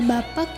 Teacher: alofon K terbuka karena lafalnya adalah baku sedangkan pada kata bapak diwakili oleh alofon k yang mirip dengan tanda baca tanya